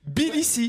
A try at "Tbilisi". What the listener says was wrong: Tbilisi. Tbilisi, avec un T devant.